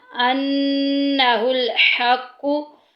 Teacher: नून मुशद्दिद आ गई, गुन्ना करेंगे, नाक में आवाज़ लेके जाएंगे